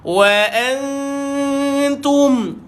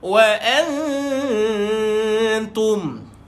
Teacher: nun kosong jumpa dengan ta, maka dengung dia dibaca dengan dengung samar, ikhfa hakiki. Dan dia punya dengung dia kita nak tebalkan nipis, dengung kat sini nipis sebab huruf ta.